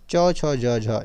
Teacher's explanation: च, छ, ज, झ यह तालव्य हो जाएगा आपका